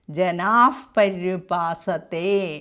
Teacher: യേ ജനാഹ പര്യുപാസതേ എന്നുള്ളത്ത് ജനാഹ അവിടെ ജനാഫ് എന്ന് വരും